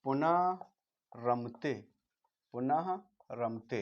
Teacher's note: विसर्ग का लोप हो गया, इसका दीर्घ हो गया